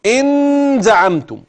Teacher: ن مشدده فينطق هكذا ان زعمتم ويظن انه اتى بالاخفاء و طرف اللسان يلتصق بمحل النون الواضحه البينه فيجعلها نون مشدده لا النون المخفاه طرف اللسان لا يلتصق بل يكون عائما في